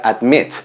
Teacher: La última sílaba es acentuada, son dos sílabas